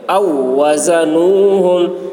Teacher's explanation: یہ واو کو نہیں پڑھا جائے گا، حمزہ کو تشدید والے واو کے ساتھ ملا کر پڑھیں گے. او وزنوہم، زا کی آواز سخت ہوگی.